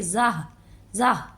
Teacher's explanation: ہا کی آواز نکالیں گے، ہا کا ساؤنڈ آئے گا جس کو واضح کر کے نہیں بلکہ نارملی طریقے سے ادا کریں گے